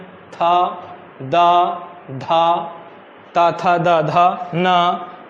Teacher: दांत से टकरा रही है जीभ आपकी।